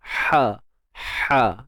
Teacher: Wa aslahu, apa yang berlaku ketika kita sebut huruf ha pedas ni, kita punya bahagian ni injak suara, lisanul mizmar. Okey, bahagian injak suara kita ni dihimpitkan ataupun disempitkan pada bahagian dinding kerongkong tu. Sebab tu bila kita sebut ha, dia macam tertarik sikit bunyi dia.